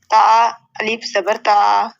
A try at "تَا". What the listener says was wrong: الف زبر نہیں ہے بیٹے، تا زبر پھر الف پڑھنا ہے ہم نے۔